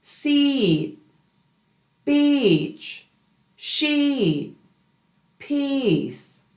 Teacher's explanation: In American English, that long E is not just a flat sound. It has length and it has melody. It's as if you're repeating the E sound or saying it twice, but on a different musical note.